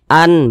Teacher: karena dia izhar maka dia dibaca jelas tidak berdengung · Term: izhar halqi